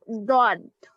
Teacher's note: ضاد زڈ کی آواز نہیں آئے گی، ڈی کی آواز آئے گی